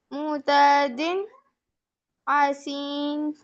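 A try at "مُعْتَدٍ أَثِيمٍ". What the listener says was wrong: عین کو ٹھیک کریں. معتدن اثیم आइन पे ना झटका नहीं देना, आइन हलक से निकालें, मुअतदिन असीमिन।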